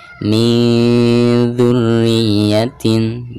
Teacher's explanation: Jadi bukan suara ang, ing, ung ya, melainkan suara gunah yang keluarnya itu dari pangkal hidung.